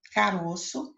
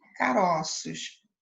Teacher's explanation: o som da vogal O no singular apresenta timbre fechado, mas quando a palavra vai para o plural, apresenta timbre aberto. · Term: plural metafônico